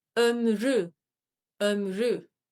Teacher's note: that Ü in the second syllable will drop and it will become ömrü, ömrü, the lifetime or the life.